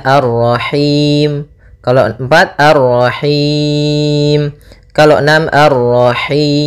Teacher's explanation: Nah, di sini boleh kita panjangkan hi-nya karena bertemu dengan huruf mad, boleh 2, boleh 4, boleh 6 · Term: mad arid lis sukun